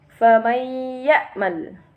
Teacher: nun sukun atau tanwin itu dimasukkan menjadi satu dengan huruf sesudahnya atau ditasdidkan dengan mendengung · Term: idgham bighhunah